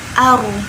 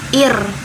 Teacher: Seperti contohnya ketika sebelumnya itu fathah atau dhammah itu bacanya tebal, aru. Sedangkan jika sebelumnya itu kasroh maka dibacanya ir. Dia rahangnya tipis ya.